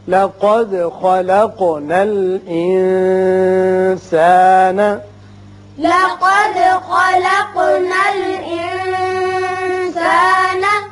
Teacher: دال کی صفت قلقلہ اس لیے کہ مجزوم ہے، اسی طرح قوف کی بھی صفت قلقلہ ادا ہوگی